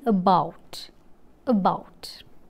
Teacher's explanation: Coming to the articulation, during the articulation of this vowel, the center of the tongue is raised to a position between half open and half close. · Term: central vowel